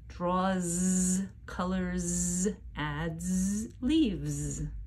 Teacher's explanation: the S at the end of singular verbs with a voiced ending sounds like Z · because my voice is on when I end these verbs my voice stays on for the singular s sound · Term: z sound, Z sound